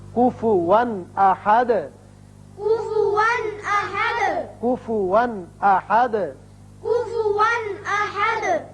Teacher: یہاں کفواً 2 زبر تنوین ہے لیکن آگے حمزہ بشکل الف آ گیا جو کہ حروف حلقی میں سے ہے، لہذا یہاں اظہار حلقی ہوگا. احدن ہے چونکہ یہاں آیت ختم، رکوع بھی ختم ہے، دال ساکن ہے، وقف کریں گے لہذا دال ساکن ہو جائے گا.